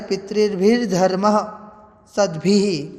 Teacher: यहाँ पर है पितृभि, तृतीय विभक्ति का बहुवचन है पितृभि, तो विसर्ग को र हो गया